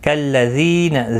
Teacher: ذی یا مدہ ہے، ایک الف کی مقدار کے برابر کھینچ کر پڑھیں گے